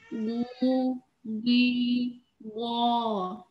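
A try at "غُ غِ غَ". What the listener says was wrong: Jangan pakai G dalam bahasa Indonesia ya. Gu itu Indonesianya, tapi agak tebal dalam bahasa Arab.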